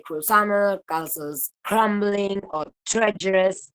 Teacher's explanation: the voiced approximant is devoiced by the voiceless plosive that precedes it